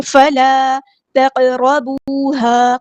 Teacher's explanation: تو تق اسپیڈ کو تھوڑا سلو کریں گے تو دونوں حروف صحیح سے ادا ہو جائیں گے. قاف ساکن ہے تو قلقلہ ہو رہا ہے. را ہمارا ہیوی لیٹر پورا ادا کریں گے.